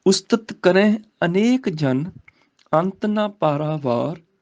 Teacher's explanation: ਕਰੇ ਦਾ ਨਾਸਕੀ ਉਚਾਰਨ ਹੈ ਬਿੰਦੀ ਨਾਲ